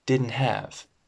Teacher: There's no T. The T disappears.